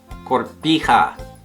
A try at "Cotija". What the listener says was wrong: Cotija. C-O-T-I-J-O. There's no R.